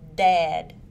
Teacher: It is a stop sound and is voiced. The vocal cords vibrate.